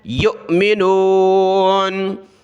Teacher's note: حمزہ ساکنہ ہے، جھٹکے کے ساتھ پڑھنا ہے